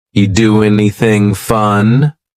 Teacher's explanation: We link together doing because we're going to drop the G. It ends with the sound N, the N sound.